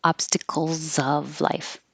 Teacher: The S is a Z and it connects to the O.